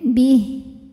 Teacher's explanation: kalau berhenti tidak ada Mad tidak ada bacaan panjang h-nya jadi sukun bnya tetap pendek Bih tanda wakafnya namanya alwaqfu Aula